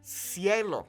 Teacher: in Mexico, when we have the letters C, C, okay, Z, Z, and S, okay, we don't lisp them